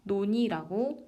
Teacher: 니은이 붙었을 때 리을이 떨어지는 현상입니다. 놀니가 아니라 논이라고 발음하는 것입니다. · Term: 자음 탈락